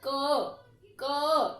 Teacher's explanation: क बोलते ही पीछे अ की ध्वनि आ रही है क, तो इसमें यानी कि अ स्वर मिला हुआ है, तो हमने इसका अ स्वर जो है अलग कर दिया। · देखो क बोलते ही पीछे अ की ध्वनि आ रही है